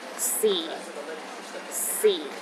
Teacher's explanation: the fourth tone is the lowest tone